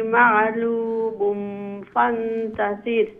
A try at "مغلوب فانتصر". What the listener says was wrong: مغلوب فانتصر. عين نايقو غين مغ جي جي.